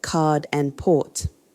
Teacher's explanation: You do pronounce R before vowels within words like red and very, and as linking R between words like car engine. You don't pronounce R at word endings like car and teacher, or before consonants like card and port. When R isn't pronounced, the preceding vowel often changes quality or length to maintain the word's phonetic integrity. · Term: non-rheticity